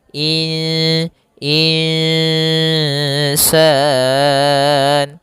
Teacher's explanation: Maka kemudian di sini insan ada nun sukun bertemu dengan alif maka maaf ada nun sukun bertemu dengan huruf sin maka kita namakan dengan bacaan ikhfa yaitu secara membacanya itu nunnya kita samarkan kepada huruf sin kemudian terdengar suara samar-samarnya in insan insan panjangkan dulu dengungannya atau panjangkan dulu ikhfanya panjang Bkan dulu bacaan gunanya dua harakat in dan itu tipis ke huruf sin insan.